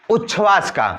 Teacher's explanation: तो अब त द के बाद यदि आपका तालव्य श आ जाए, त द के बाद यदि आपका तालव्य श आ जाए तो त द के स्थान पर, त द बहुत ध्यान देने की बात है, त द के स्थान पर आपका च हो जाएगा और श के स्थान पर छ हो जाएगा। त द के स्थान पर च हो जाएगा और श के स्थान पर छ हो जाएगा